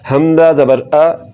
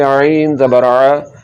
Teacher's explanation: حمزہ کا مخرج یعنی کہ اس کے نکلنے کی جگہ حلق کا نیچے والا حصہ ہے، اور عین کا مخرج حلق کے درمیان والا حصہ ہے۔ عین کو حلق کے درمیان والے حصے سے نکالیں گے۔